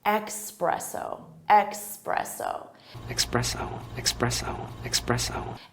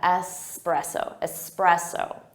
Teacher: Some native speakers will say it with an X sound